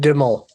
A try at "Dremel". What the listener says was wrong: Dremel. It's actually Dremel with a brr. Yeah, Dremel.